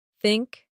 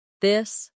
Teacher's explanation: The tongue comes gently between the teeth. For think it's soft. For this it's voiced.